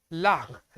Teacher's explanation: जो हमारे बाए तरफ से और हमारी जो दाहिने तरफ से हमारी जो जीभ है इसके जो है दोनों तरफ से हवा निकलती है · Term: पार्श्विक